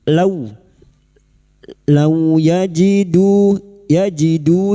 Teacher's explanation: fathah bertemu wau sukun kita lunakkan huruf lin seperti bertemu dengan huruf abjad u jangan dibaca o